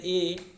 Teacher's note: ए का उच्चारण स्थान कंठ और ताल से होता है